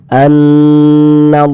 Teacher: Nah, maka ini kita baca gunnah, kita dengungkan. Jadi kita tahan ya, kita gunnahkan. Jadi suaranya itu kita tahan, kita panjangkan sejenak. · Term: gunnah musyaddadah